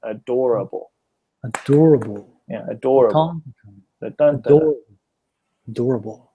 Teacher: this one has four syllables adorable and door has the strong strong accent